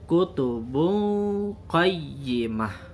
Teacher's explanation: Karena huruf sesudahnya qaf dan qaf juga termasuk huruf ikhfa, maka tanwinnya dibaca samar-samar.